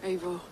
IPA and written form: ˈeɪvɔːr (Eivor)